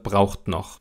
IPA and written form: ˈbʁaʊ̯χtⁿ͜nɔχ (braucht noch)